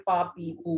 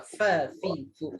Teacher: Fa ni dia punya mahraj gigi atas dengan bibir bawah macam rabbit tu. Jadi kalau sebut huruf fa bila mengaji pastikan ada angin, dia ada sifat angin dia ya.